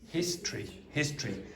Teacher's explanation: The O is almost always like um removed.